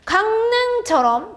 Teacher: 강릉처럼 비음과 리을이 만났을 때 리을의 비음화가 일어난 거지.